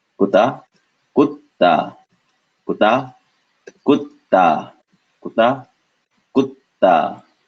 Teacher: We see the two T's, two ta sounds, which is not an English T, but the one where your tongue touches the bottom of your top front teeth